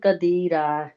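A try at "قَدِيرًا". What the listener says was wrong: ابھی بھی آپ کا قدیرہ ہے، قاف موٹا، قدیرہ پیچھے سے جیسے نہیں گلے سے ہوتا نا، یہ گلے کے آگے والا جو حصہ ہے، یعنی گلا جہاں سے ختم ہوتا ہے اسے، ٹھیک ہے؟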